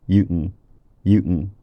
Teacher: It's just a syllabic velar nasal all on its own with no plosive. It's one sound that incorporates the velar quality of the k and the nasal quality of the n.